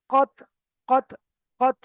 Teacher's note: দাঁতের সামনের উপরে দুই দাঁতের গোড়া থেকে ত উচ্চারণ হয়। তো ওখানে আমাকে লাগিয়ে মাত্র আলাদা করতে হবে, লাগিয়ে মাত্র আলাদা করতে হবে।